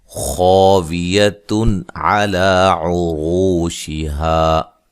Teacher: خا کو موٹا ادا کریں گے، الف مدہ ہے